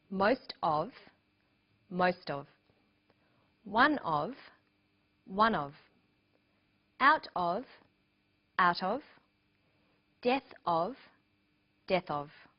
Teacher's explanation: Notice that of in these phrases is unstressed.